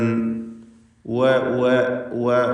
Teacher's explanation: ചുണ്ടുകൾ എന്ന അതിന്റെ മഹ്റജ് പ്രത്യേകം ശ്രദ്ധിച്ചുകൊണ്ട് രണ്ട് ചുണ്ടുകളിൽ നിന്ന് തന്നെ ഉച്ചരിക്കുക വ രണ്ടും ശരിയായി ആവർത്തിച്ചു പറയണം വവ വാവ എന്നൊന്നും നീട്ടി പോവുകയോ അല്ലെങ്കിൽ